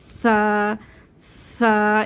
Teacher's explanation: जब हमारी जुबान दांतों से बाहर आएगी तो सा अदा होगा यानी कि हमारी जुबान की नोक थोड़ी सी बाहर आनी चाहिए